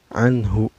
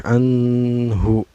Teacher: nun sukun nya dibaca secara jelasnya enggak boleh memantul dan gak boleh dengung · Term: izhar